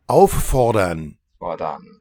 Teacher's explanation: And the R really vocalizes to this kind of pharyngally sounding ah.